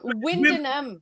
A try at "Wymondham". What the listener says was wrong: It's not Win, it's Wim.